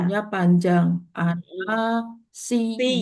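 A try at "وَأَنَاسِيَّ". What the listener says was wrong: Siya, yanya pendek. pendek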